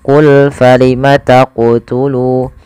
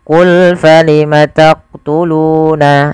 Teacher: Maka ketika melafalkan huruf qaf di sini harus memantul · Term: qalqalah